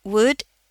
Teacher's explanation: L-nya enggak ada ya